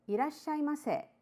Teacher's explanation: Irashaimase, slightly rising intonation